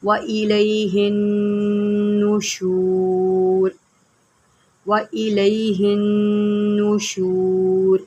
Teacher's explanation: اب یہاں پر نون مشدد ہے، یہاں پر غنہ کریں گے اور یہاں پر اکثر لوگ زبر پڑھ دیتے ہیں، وَإِلَيْهِ النُّشُورُ پڑھ دیتے ہیں، جبکہ ہے وَإِلَيْهِ النُّشُورُ، اس بات کا آپ نے خاص خیال رکھنا ہے۔